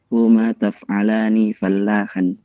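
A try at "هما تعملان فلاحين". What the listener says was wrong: Taf? Laisa taf. Ta. Huma ta'malani fallahan.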